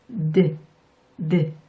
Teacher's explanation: 그 상태에서 드 이렇게 발음해 주시면 되는데요. 무성음인 T와 혀의 위치가 똑같아요. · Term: D